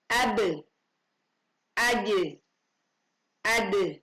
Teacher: Huruf-huruf ba, jim, dan dal. Ketika kita menggemakannya, suara yang muncul adalah suara yang terdengar miring atau yang disebut imalah sughra. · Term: imala sughra